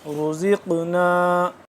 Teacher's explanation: را بھی رو، را کو پور پڑھیں گے، زا قاف زیر زق موٹا بھی ہو رہا ہے اور پلس قلقلہ بھی ہو رہا ہے